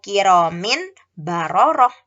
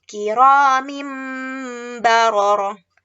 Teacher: bunyinya itu dibalik menjadi huruf Mim